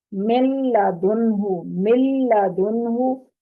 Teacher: مکمل طور پر نون کی آواز کو ہم لام کے اندر داخل کر دیں گے، نون کی آواز کو ہم اگلے حرف کے اندر داخل کر دیں گے۔ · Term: ادغام تام